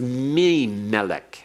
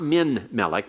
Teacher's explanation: Before non-gutturals, the nun is assimilated. It becomes mi-melek.